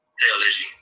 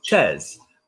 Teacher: the TH in French is pronounced t hard.